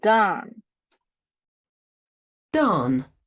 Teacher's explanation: there's no Glide for the pure vowel ah in time and done